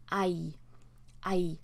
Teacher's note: there's a little hint of an ah sound in there.